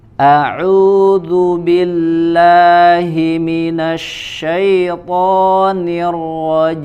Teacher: hamzah di aqsal halqi ya, di pangkal tenggorokan, kemudian ain di wasatul halq ya, di tengah tenggorokan